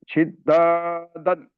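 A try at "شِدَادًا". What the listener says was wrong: तजदीद नहीं है ना यहाँ पे, नॉर्मल पढ़ना है। नहीं, शिदादन। तजदीद रहा तो दबा के पढ़ते थे। तजदीद नहीं है। शिदादन।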